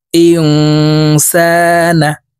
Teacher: হামজাহ নুন জের ইং, ইকফাহ গুন্না, নুন সাকিনের পরে ইকফার হরফ সিন আসছে, তাই এই নুনকে নাকের ভিতরে লুকাইয়া গুন্নার সহিত পড়ব। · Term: ইকফা গুন্না